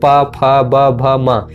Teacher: ओष्ठ व्यंजन में आप देखेंगे जो दोनों होठ होते हैं आपके, होठ ये जो है स्पर्श करते हैं